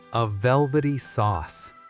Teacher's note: Notice how the Y in velvety slides into the S in sauce.